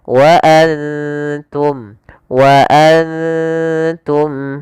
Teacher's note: Kemudian berfal antum ada bacaan yaitu ikhfa kembali yaitu adanya nun sukun bertemu dengan huruf ikhfa yaitu huruf ta. Cara membacanya yaitu kita samarkan ke ta dan ta hurufnya tipis jangan antum tapi dia wa antum wa antum.